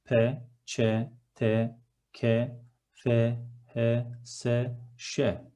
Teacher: Why do we call them voiceless consonants? Because while we are articulating these consonants, we don't use our vocal cords. There is no vibration in the throat, we just use our mouth.